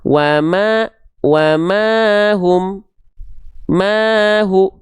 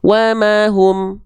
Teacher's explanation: mimnya ada fathah ketemu alif dibacanya 2 harokat